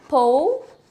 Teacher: A schwa is a very subtle sound, and it will still count another syllable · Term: schwa sound